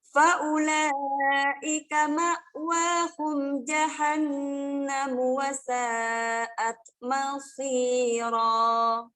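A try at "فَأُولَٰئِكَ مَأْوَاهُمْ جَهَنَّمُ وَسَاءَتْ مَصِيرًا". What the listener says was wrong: Bagus, alhamdulillah. Nafasnya panjang insyaallah.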